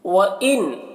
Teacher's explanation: نون میں اظہار ہو رہا ہے، نون کو جلد پڑھنا ہے